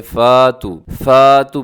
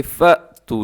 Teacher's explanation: अक्सर लोग क्या करते हैं फ़ा तू पढ़ देते हैं, तो बल्कि फ़ा तू नहीं है बल्कि फ़ तू, झटके के साथ।